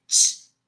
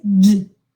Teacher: the articulation is just the same. Okay, these are palato-alveolar sounds, the same. Okay, because there you have most of the tongue touching the soft palate.